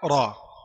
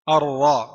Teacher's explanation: Ra berharakat fathah dammah dan keadaan yang dari jenisnya tebal